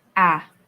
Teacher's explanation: It's a straight line. It's monotonous, hindi ka tataas, hindi ka bababa, and it's like you're singing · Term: first tone